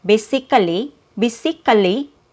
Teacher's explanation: the vowel sound or the schwa after k is not heard. So this one is removed.